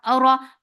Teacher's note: ra is heavy for fatha open jaws, the sound is short